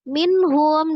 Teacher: Izhar halqi dibaca dengan jelas ya, ha huruf halqi dari tenggorokan bawah.